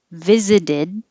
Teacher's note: the t in the middle changes to a d and then the d at the end connects to the u so it really does sound like visit us that's a lot